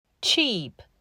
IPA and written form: tʃiːp (CHEAP)